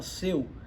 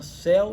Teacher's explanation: Você tem a palavra céu e a palavra seu. Seu é fechado, céu é aberto.